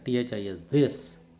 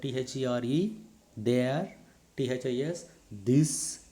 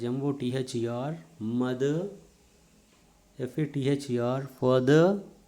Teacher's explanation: it is a dental voiced fricative, dental voiced fricative